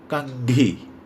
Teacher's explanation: तो आप देखेंगे आपके नाक में थोड़ा सा वाइब्रेशन हो रहा है। वो वाइब्रेशन और कोई नहीं बल्कि ये अनुस्वार व्यंजन वर्ण का है।